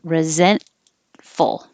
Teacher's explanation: you don't have to say the T because it comes after the N. Your tongue goes up to the N position.